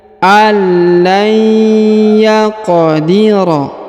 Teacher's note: huruf qaf berharokat sukun, maka dia dipantulkan